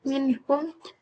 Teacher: izhar adalah membaca nun mati atau tanwin dengan jelas tanpa dengung dan tidak melebur